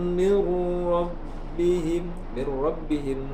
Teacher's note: nun sukun bertemu dengan ra disebut dengan idgham bila gunnah. diidghamkan atau dileburkan tanpa disertai dengan dengung.